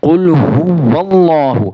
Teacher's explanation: واللہ، قل ہو اللہ اکثر لوگ پڑھ رہے ہوتے ہیں، تو یہاں پہ واو کو ظاہر کر کے پڑھنا ہے۔ قل ہو واللہ، واو کو اللہ، لفظ اللہ کے لام کے ساتھ ملا کے پڑھنا ہے، تو یہاں پہ واللہ واو کو ظاہر کرنا ہے، ٹھیک ہے جی۔